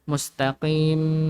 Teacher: jangan lupa ya, ketika mimnya itu ada sedikit gunnah.